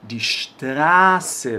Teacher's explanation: Que ela vai ter som de dois S's. Só que sempre que eu tiver uma vogal, né, antes aqui desse SZ, essa vogal eu vou demorar um pouquinho na hora de pronunciar, vai ser uma vogal longa. Então, die Straße, demora mesmo um pouquinho para falar.